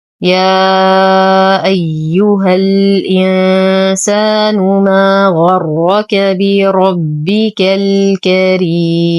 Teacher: بربك أنتقل من فتحة الكاف إلى إسكان اللام القمرية البينية. الكريم نقف على الميم بالبينية وقبله حرف مد فهو مد عارض للسكون، يمد بمقدار 2 4 6 حركات.